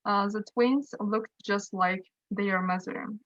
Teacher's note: t sound is omitted because looked is followed by consonant sound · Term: elision